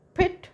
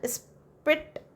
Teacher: in case of pit, puff is made, pit, and spit, that's a no puff, that is unaspirated. So that P means P, no changes, but then position changes, and that is called allophones, right?